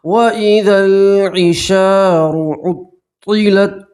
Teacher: را کے اوپر پیش ہے، را کو پور پڑھیں گے، موٹا پڑھیں گے